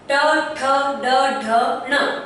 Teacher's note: जिह्वा ने हमारे मूर्धा के भाग को स्पर्श किया है, इसीलिए इन्हें मूर्धन्य जनित व्यंजन कहा जाता है